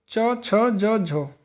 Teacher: केवल एक ही पूरा वर्ग है जिसे स्पर्श संघर्षी बोलते हैं, वो है हमारा च छ ज झ